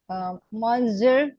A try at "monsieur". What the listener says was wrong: Monsieur, you see, O is not, that O, you don't, the O is not, does not sound O. It becomes monsieur, monsieur, monsieur.